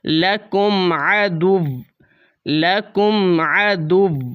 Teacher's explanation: واو کے اوپر جو دو پیش ہیں دونوں پیش ختم کر دی جائیں گی۔ واو کو آپ نے ہلکا سا ظاہر کرنا ہے۔ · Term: وقف